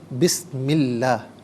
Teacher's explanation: یہاں پر اسم اللہ کے الف لام کو باریک پڑھیں گے کہ ما قبل میم کے نیچے زیر ہے